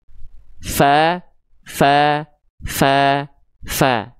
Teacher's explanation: Jadi ujung gigi atas kita ini nempelnya ke bibir bawah bagian dalam yang basahnya fa. Jadi ketika dia tepat dilafalkan yang nempelnya bagian itu pasti huruf fanya keluar dengan natural.